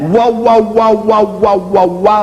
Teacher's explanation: that bilabial velar glide, you won't find that in East European languages